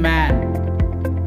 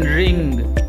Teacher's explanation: the sound is produced when the airstream passes through the nose as a result of lowering of the soft palate at the back of the mouth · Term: nasal sounds